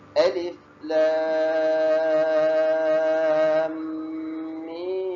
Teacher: Cara membaca dia disebut dengan 1 harakat pada alif, lamnya pada 6 harakat.